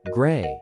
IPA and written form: ɡreɪ (grey)